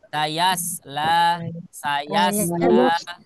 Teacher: Dia jangan sampai menjadi sayasla ya. Tapi yang betul adalah mengucapkannya adalah di rahang tebal atau yang disebut dengan tafkhim